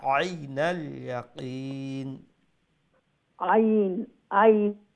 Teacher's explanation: আইন গলার মাঝখান থেকে আর একটু চেষ্টা করো